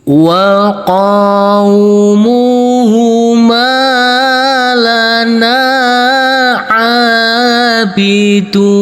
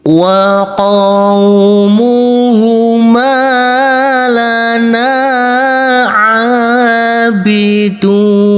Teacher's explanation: dibaca dengan cara memanjangkan bunyi huruf mad yang bertemu dengan huruf sukun karena wakof atau karena berhenti. Di mana bisa dibaca dengan panjang 2 harokat, 4 harokat, dan 6 harokat.